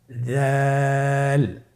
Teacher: জালের মাখরাজ হল জিহ্বার আগা। সামনের উপরের দুই দাঁতের আগার সঙ্গে লাগিয়ে উচ্চারিত হয়।